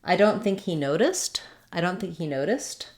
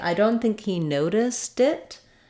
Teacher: my T that I'm saying on noticed is going to change back to a flap as I link it